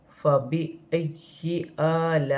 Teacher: لام کے ساتھ الف مدہ بن رہا ہے اور بڑی مد بھی ہے، مد متصل، اسے 5 الف کی مقدار تک کھینچ کر پڑھا جائے گا